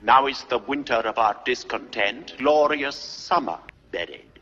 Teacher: One really popular approach is to have a tapped R, like in an old-fashioned British.